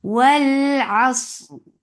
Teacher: ففتحة open jaws attached lam. Lam will get sifa of tawassut and tawassut is medium flow up sound.